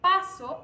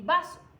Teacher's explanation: El rasgo que desliga a una de la otra es que el primer fonema P es sorda y la B sonora